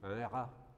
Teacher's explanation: Autrefois, quand vous écoutez des personnes du début du XXe siècle, mettons, ils vont prononcer un rat, le R roulé. Et puis, il y a un R grasseyé, par exemple, un rat, vous voyez, avec une sorte de mouvement de gorge un peu.